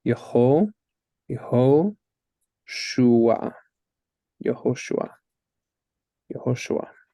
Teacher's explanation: Yeho. So you kind of have to do a little bit of a huh in the middle